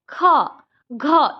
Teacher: इनको बोलने में ज्यादा हवा निकल रहा है, ज्यादा मेहनत करनी पड़ रही है, तो ये महाप्राण हो जाएंगे। · ख बोलने में ज्यादा हवा निकलती है मुंह से, तो वो क्या हो जाएगा, महाप्राण। जिनको बोलने में ज्यादा हवा निकले मुंह से वो महाप्राण, जिनको कम आवाज हवा निकले वो अल्प प्राण।